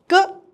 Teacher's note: ಕ ಅಂತ ಹೇಳುವಾಗ ಸ್ವಲ್ಪ ಉಸಿರು ಹೊರ ಬರುತ್ತದೆ ಇವು ಅಲ್ಪಪ್ರಾಣಗಳು